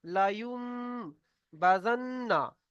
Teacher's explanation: নুন সাকিনের পরে যদি বা আসে তাহলে নুন সাকিনকে মিমের দ্বারাই পরিবর্তন করে একালিফ পরিমাণ গুণনা করে পড়বো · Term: ইকলাব